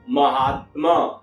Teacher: ये दोनों आ मिल करके अपनी सत्ता को मिटा करके एक तीसरे आ को जन्म दिया · तो यहाँ है महा जोड़ आत्मा, तो पहले शब्द खंड का अंतिम वर्ण आ और दूसरे शब्द खंड का आदि वर्ण आ, तो यह आ और आ मिलकर के आ हो गया, आ विकार पैदा हो गया, तो यह शब्द हो गया महात्मा।